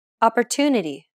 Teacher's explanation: The stressed syllable tu in opportunity is pronounced longer than all the other syllables.